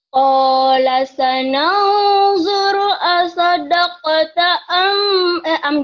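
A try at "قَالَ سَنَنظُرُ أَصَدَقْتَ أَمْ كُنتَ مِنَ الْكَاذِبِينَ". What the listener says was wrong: Amnya kan idham. ditahan. Kongnya jangan kong banget, ikhfanya biasa aja. Kong. Masih ada M-nya. Kalau ang banget kalau ketemu kaf dan kop ya. Kong ta.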